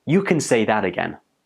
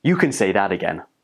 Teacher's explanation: Can in this expression takes the weak form and it's pronounced like kun.